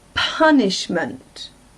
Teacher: the part that is stressed is the first syllable